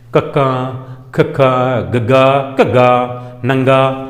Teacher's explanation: ਦੂਜਾ ਅਗਲਾ ਕਿਹੜਾ ਸੀ ਕੰਠੀ ਵਿਅੰਜਨ ਕੰਠੀ ਵਨ ਜਦੋਂ ਕੰਠ ਨਾਲ ਜੀਭ ਦਾ ਪਿਛਲਾ ਹਿੱਸਾ ਲੱਗਦਾ ਹੈ ਤਾਂ ਕੰਠੀ ਧੁਨੀ ਪੈਦਾ ਹੁੰਦੀਆਂ ਹਨ ਕਿ ਜਦੋਂ ਜੀਭ ਨਾਲ ਜਦੋਂ ਕੰਠ ਨਾਲ ਜੀਭ ਦਾ ਪਿਛਲਾ ਹਿੱਸਾ ਲੱਗਦਾ ਹੈ ਤਾਂ ਕੰਠੀ ਧੁਨੀਆਂ ਪੈਦਾ ਹੁੰਦੀਆਂ ਹਨ